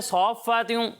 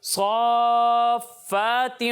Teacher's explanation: یہاں پر مد لازم ہے, اس کی مقدار کو آپ نے پورا کرنا ہے. 3 الف تک کھینچنا ہے.